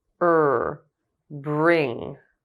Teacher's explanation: when er is in a beginning consonant cluster the lips may not be as tight as in the beginning